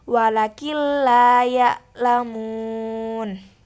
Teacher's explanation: dengan mengidgamkan nun atau tanwin pada lam dan ro tetapi tanpa mendengung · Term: idgham bila gunah